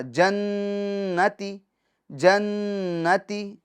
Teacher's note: ایک الف کی مقدار آواز ناک میں ٹھہری رہے گی، یعنی اس طرح جنتی جنتی. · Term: گنہ